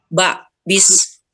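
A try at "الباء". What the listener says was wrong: bukan ba ya. Bukan, apalagi bukan bi bilangnya. Alba namanya. Alba'u.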